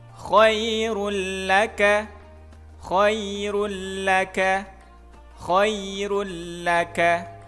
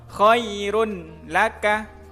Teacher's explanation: dimasukkan tetap tapi bacaannya tidak dengan dengung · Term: idgham bila gunnah